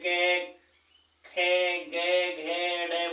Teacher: हमारे किसी भी वाग यंत्र को स्पर्श अवश्य करती है जैसे क ख ग घ ड बोलेंगे यहां कंठ से ध्वनि निकलेगी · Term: स्पर्शी व्यंजन